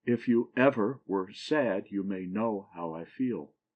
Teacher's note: a foot that has the last syllable accent and the first two not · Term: anapest